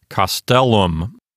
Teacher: The accent won't go over to the antepenult. It'll stay here on the penult. And so this word sounds like castellum.